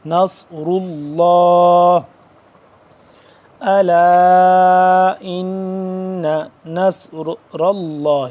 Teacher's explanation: لفظ اللہ موٹا پڑھیں گے کیونکہ اس سے پہلے پیش ہے